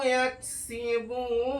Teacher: হরফে মাদের পর অক্ষরটা সাকিন হওয়ার জন্য এখানে মাদ্দে আরিদ ওয়াকফি হবে, টান হবে 3 আলিফ পরিমাণ